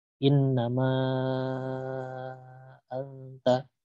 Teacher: Terpisah di dua kata berbeda, maka dibaca panjang 5 harokat juga. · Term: jais mufasil